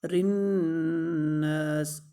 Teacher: رناس، را کو باریک پڑھیں گے کیونکہ اس کے نیچے زیر ہے اور نون کے ساتھ ملائیں گے بھی اور نون پر غنہ بھی کریں گے اور نون کو ایک الف کے برابر لمبا بھی کریں گے